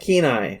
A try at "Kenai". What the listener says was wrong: You gotta hit the E a little bit harder. Kenai.